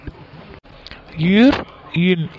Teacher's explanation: இர் இன் ஆகிய இரு எழுத்தும் மேல்வாய் நாக்கின் நுனி மிகவும் பொருந்துவதால் பிறக்கிறது.